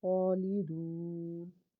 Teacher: stop کریں گے تو نون کو ہم پھر جزم کے ساتھ پڑھیں گے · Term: وقف تام